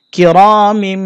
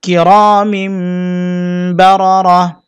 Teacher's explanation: তানবিনকে মিম দ্বারা পরিবর্তন করব এই গুন্নাটির নাম ইকলাব গুন্না বা কলব গুন্না